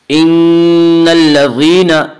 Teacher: ان نون مشددہ غنہ ہوگا، ان الذین، یا مدہ ہے، یا مدہ اس یا کو کہتے ہیں جو یا ساکن ہو اور اس سے پہلے زیر ہو، اور یا مدہ کو ایک الف کے برابر کھینچ کر پڑھیں گے۔